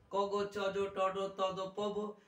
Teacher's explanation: প্রাণ মানে কি নিঃশ্বাস বা শ্বাসবায়ু। আর বর্গের প্রথম আর তৃতীয় উচ্চারণ করতে অল্প শ্বাসবায়ু লাগে, তাই এদের বলা হয় অল্প প্রাণ,